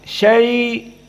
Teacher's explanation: syai seperti biasa madlin dua harakat